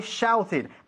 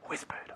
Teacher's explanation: Ahí hay que pronunciar la E. ¿Ok? Al final de la ed.